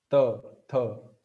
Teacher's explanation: The tongue is hitting the upper teeth from behind. So that's why it's Danta.